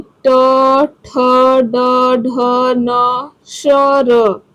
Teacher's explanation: जीभ जो है वो तालु में जाने के बाद थोड़ी सी मुड़ जाती है, वो हमारी मूर्धा हो जाती है, तालु के पीछे वाली जगह को थोड़ी सी स्पर्श करती है, उसे हम मूर्धा कहते हैं।